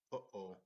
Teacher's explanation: the sound comes from the back of the throat and it's a glottal stop